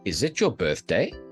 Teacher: you see how the voice goes up at the end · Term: Rising